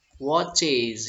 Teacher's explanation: es menjadi watches ya, dibaca voice ya atau bersuara